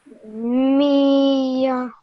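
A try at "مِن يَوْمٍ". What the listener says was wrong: Okay, well done. Really good try, okay?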